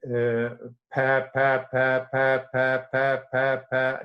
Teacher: Fortunately, you could also take the air pressure during the P occlusion for the consonant P, because then P is an unvoiced, so that means it is produced with open glottis, and if you have the glottis open and the mouth closed, you have the lung pressure in the mouth.